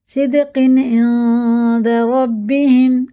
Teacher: تنوین کے بعد عین آ رہا حرف علقی میں سے، اظہار کا قاعدہ، اور یہ اخفا کا ہے کیونکہ دال آ رہا اظہار میں سے، اخفا میں سے۔